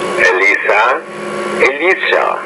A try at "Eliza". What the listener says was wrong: Not bad, but I think Eliza. So sometimes when the S and the Z are in the middle of the word, you have a tendency to produce them the same way.